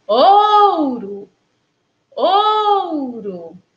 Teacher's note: Na palavra ouro, o O da sílaba tônica, né? Ou, tem som de O, enquanto que o O da sílaba átona, que é O, tem som de U. · Que a sílaba tônica é a sílaba OU. A sílaba átona é a sílaba RO. Na sílaba tônica, o O, ele realmente tem o som do O, que aí tem o OU, né?